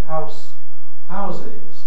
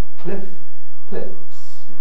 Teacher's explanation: voicing of the fricative in the plural